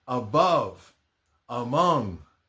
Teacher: The next of the pronunciations is called a schwa. And a schwa A doesn't sound like A at all. It sounds very much like the short sound of the letter U. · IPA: /ə/